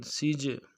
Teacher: جیم حروف قلقلہ میں سے قلقلہ کریں گے